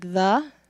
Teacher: There's voiced and not voiced. And so we have your tongue through your teeth, interdental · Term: interdental fricatives